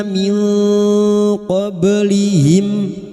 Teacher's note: Ikfa hakiki. Nun sukun dibaca samar dan mendengung selama tiga harakat